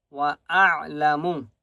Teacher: عین کے آواز حلق سے نکالیں گے. وَأَعْلَمُ ما، میم کو 1 الف کی مقدار کھینچ کر پڑھیں گے.